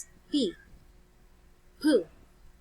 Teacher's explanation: since you close your two lips, the upper and lower lip, P, and there is a sudden burst as if there is an explosion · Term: plosive